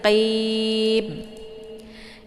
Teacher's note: Ini qaf ini huruf qalqalaf. Jadi dia posisinya di pangkal lidah ya, bukan di tenggorokan ya. Jadi jangan dibaca khim, tapi qim.